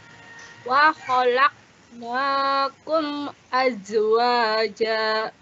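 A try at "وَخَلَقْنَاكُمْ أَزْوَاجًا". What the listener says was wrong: Ada qaf sukun, betul Bu ya. Qalqalah. Wa khalaqna laqana mantul. Yang kedua, za jangan mantul. Azwaja.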